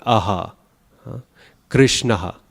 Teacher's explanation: It's essentially a very soft aspiration, soft H sound, without the throat being used. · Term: visarga